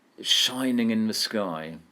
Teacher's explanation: You've got that funny assonance in shining in. We've got that sibilant sh and sk.